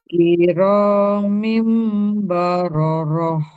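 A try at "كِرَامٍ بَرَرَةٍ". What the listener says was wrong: Kurang dengungnya.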